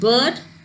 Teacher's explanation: wall this is a as in bird it is half closed between half open and half close central and unrounded